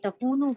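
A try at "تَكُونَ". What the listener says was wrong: تکونا. تو یہ کیا وجہ ہے؟ کئی ساتھیوں نے اس کو تکونو پڑھا ہے. میرا خیال ہے زبان پہ وہی لفظ چڑھا ہوا ہے، تو غور کریے. تکونا ہے. ان کے بعد زبر آ رہا ہے.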